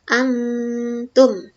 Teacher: Nah, di sini ada nun sukun bertemu dengan huruf ta dibaca samar-samar. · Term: ikhfa hakiki